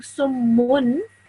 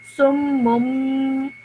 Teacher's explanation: And if a tanween, next to your tanween you have a meme, that means that instead of ending the sound with the noon, you're ending your sound with the meme